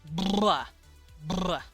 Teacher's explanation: So if this was voiced bilabial trill, that means there's a hum. I use both my lips, kissy, and it is rolled.